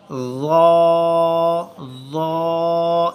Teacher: ज़ा, इसके मखरज को मैं दोहराता चलूँ, ज़ुबान की टो फ्रंट वाले जो दांत हैं उनकी एजिस के साथ टच करते हुए बहुत नरम सॉफ्ट साउंड हम निकालेंगे